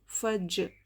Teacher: فا پر زبر ہے، نہیں کھینچیں گے فا. جیم یہ حرف قلقلہ میں سے ہے، اس لیے آواز کو ٹکرا کر پڑھیں گے